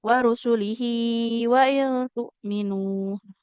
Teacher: a-nya dibaca panjang dua harakat